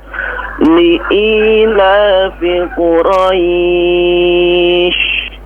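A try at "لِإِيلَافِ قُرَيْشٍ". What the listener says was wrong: Afwan ya, qafnya diperjelas ya, sudah bagus. Ya, qafnya diperjelas leh.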